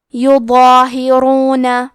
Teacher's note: یہاں راء کا حکم ہے تفخیم تو ہم حرف الراء کو موٹی آواز میں پڑھیں گے · مد الف میں پیچھے والے حرف کا حکم لیتے ہیں تفخیم میں اور ترقیق میں، تو کیونکہ اس کے پہلے حرف الضو ہے تو ہمیں مد الف کو بھی بھاری آواز میں پڑھنا ہے